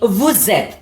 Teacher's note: Because in French, when the first letter of the first word, the last letter of the first word ends in a consonant, and the second word, the first letter starts with a vowel. You have a connection there that sounds as a Z sound, and that connectivity is known as liaison.